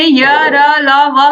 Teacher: इन वर्णों के उच्चारण में जो जीभ है वो कहीं भी मुख के किसी भी भाग को स्पर्श नहीं करती · ये व्यंजन अंदर से निकलते हैं और ये बिना रगड़ खाए ही मुख से बाहर निकल जाते हैं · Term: अंतस्थ व्यंजन